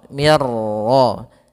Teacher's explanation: nunnya dimasukkan ke huruf ra dan dia tidak lagi terbaca ada nunnya, maka langsung ke ra, mir ra. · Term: idgham bila gunnah